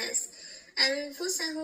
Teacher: بعد از نون ساکن حرف فا ذکر شده اینجا هم اخفا صورت می‌گیره